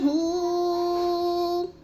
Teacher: یحسبو کو لمبا نہیں کرنا، پیش ہے، حرکت کو بالکل نہیں کھینچتے